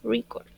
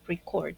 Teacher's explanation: Si es un sustantivo, la acentuación va en la primera sílaba, record, ¿ok? Pero si es un verbo, la acentuación debe ir en la segunda sílaba, record.